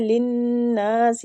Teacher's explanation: نون مشدد غنہ کریں گے اور کھینچیں گے الف مد کی وجہ سے